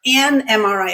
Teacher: An MRI, it just flows because the N blends into the vowel that comes after. An MRI, it flows together beautifully.